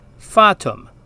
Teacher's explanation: the long a sound in Latin sounds like the a in our English word father